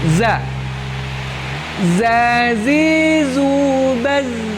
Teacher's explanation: Diawali dengan huruf za. Makhrajnya adalah ujung lidah paling depan bertemu dengan dinding gigi bawah.